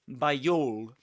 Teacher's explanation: you can link the word by to the next word with this sound, with this ya sound